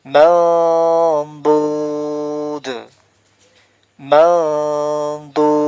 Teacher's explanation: Cara ikhfanya yaitu ya tidak sempurna ya, samar. Nunnya juga tidak sempurna, tidak juga dibilang eng, tidak juga ng, ang, ya bukan, tetapi samar.